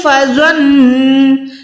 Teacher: یہاں پر نون کو گننا دیں، جب بھی نون پہ شد آئے گی یا میم پہ لازماً گننا ہوگا